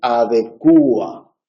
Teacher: se ha extendido la pronunciación adecua, en la que se acentúa la U. Ese acento sobre la U, que es el tramo vocálico más cerrado del diptongo, lo convierte en hiato.